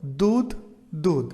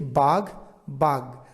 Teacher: পরেরটি যদি দেখি বাঘ বাঘ অর্থাৎ ঘেয়ে গেছে গ তার মানে মহাপ্রাণ ধ্বনি হয়ে গেছে অল্পপ্রাণ ধ্বনি